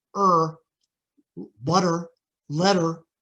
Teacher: it's very hard to hear the difference between the vowel and the r